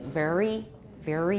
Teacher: the mouth in the general location of the alveolar Ridge but many American speakers simply Bunch the body of the tongue so that it is hard to say where the articulation is · the tip of the tongue is close to the alveolar Ridge I scrunch up the tongue and that sounds more American to my ears